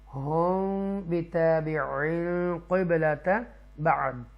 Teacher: اکفا شفوی ہوگا کیونکہ میم ساکنہ کے بعد با آ رہا ہے، اس لیے گناہ کریں گے ہم بِتَابِعٍ قِبْلَةَ بَعْض۔ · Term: اخفاء شفوی